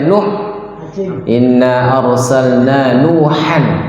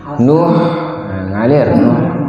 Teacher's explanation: Jadi huruf ha ini keluar dari tengah tenggorokan yang tadi sifatnya rakhawah, ngalir ya. Misalkan ee kalau kita wakafkan huruf ha ini ee dia mengalir dan juga walaupun tidak diwakafkan dia juga mengalir karena sifat aslinya seperti itu.